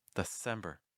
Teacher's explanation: very often that first syllable is reduced to da